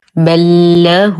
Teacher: وأي حرفين متماثلين في كتاب الله الأول ساكن والثاني متحرك فالحكم بينهما إدغام مثلين. يدخل الحرف الأول دخولا كاملا في الثاني فننطقهما وكأنهما حرف واحد مشدد